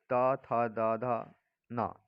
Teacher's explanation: त थ द ध न, ये दांतों तक स्पर्श करते हैं।